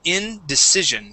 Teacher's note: So instead of saying indecision, okay, using Spanish I's, okay, we're going to use the short I.